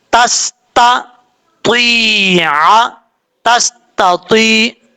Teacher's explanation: پہلے تا بریک اور دوسرا جو تو ہے فل ماؤتھ پڑھا جائے گا۔ تو اور تا دونوں میں فرق، آپ خود اس فرق کا اندازہ لگا سکتے ہیں۔